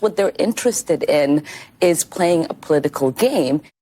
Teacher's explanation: And the vocal fry on that lady. Every time she speaks, down here.